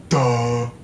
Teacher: Voiced alveolar stop and breathy voiced, low back, unrounded vowel, sometimes with advanced tongue root. Duh. Ending with a diphthong, ending with a high front vowel.